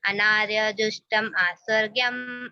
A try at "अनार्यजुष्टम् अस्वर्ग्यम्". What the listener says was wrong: अनार्य जुष्टम स्वर्गीयम अकीर्तिकरम अर्जुन। आ नहीं, अनार्य जुष्टम अस्वर्गीयम अकीर्तिकरम अर्जुन।